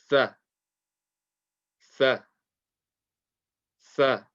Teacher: the makhraj of Tha is the tip of the tongue touching the tip of the top two teeth